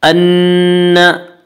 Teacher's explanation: أَنَّ نون مشدد غنہ ہوگا، غنہ کی مقدار ایک الف ہے۔